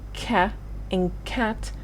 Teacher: the back of your tongue touches the soft palette